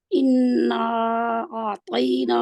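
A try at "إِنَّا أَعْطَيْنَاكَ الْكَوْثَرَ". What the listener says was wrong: नून को मोटा नहीं करना, ये देखो कितनी आसानी से मोटा हो जाता है। इन्ना इन्ना कौसर आपका मोटा है रा, लेकिन थोड़ा सा और कर दे मोटा। ठीक है, इसको यानी कि इसकी प्रैक्टिस थोड़ी मोटे की करें, और जहाँ पे आपके इन्ना जो है इसका मोटा नहीं होना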